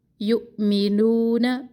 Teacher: نو واو مدہ، نون کے زبر کو لمبا نہ کرے